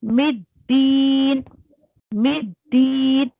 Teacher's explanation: फिर मीम को दाल में मर्ज करिए, मिद्दीन, मिद्दीन, अगर आप रुक रही हैं तो आपको दीन में दाल के साथ जो है या मद दिया आया है तो उस मद को आपको 4 काउंट देना है अगर आप रुक रही हैं।